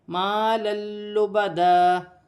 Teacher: مال لبدا، یہاں پر تنوین کے بعد 2 زبر کی تنوین کے بعد لام آ رہی ہے، تو تنوین میں غنہ نہیں کیا جائے گا۔ مال لبدا، اور یہاں پر 2 زبر کی تنوین پر وف کیا جائے گا، تو وف کی صورت میں 1 زبر گر جائے گا اور 1 زبر 1 الف مادہ میں بدل جائے گا، جیسے لبدا۔